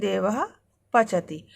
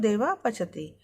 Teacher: पा और फा से पहले अर्ध विसर्ग के समान उपधमानीय का प्रयोग होता है